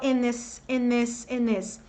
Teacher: emenda o N do in com o I do this e fala in this. Vai ter americano que vai falar in this e vai ter americano que aqui vai emendar e falar in this, tá?